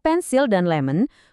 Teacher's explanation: Dikata pensil dan lemon, vokal i dan O yang posisinya jauh dari tekanan utama juga ikutan berubah jadi bunyi ngantuk yang kabur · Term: bunyi schwa